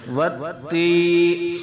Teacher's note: یا مدہ کو ایک الف مقدار لمبا کریں